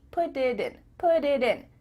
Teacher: your tongue is just tapping the top of your mouth to make a d put it in put it in instead of put it in